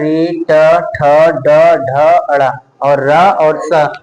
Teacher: ये हो जाएगा इनका उच्चारण स्थान मूर्धा।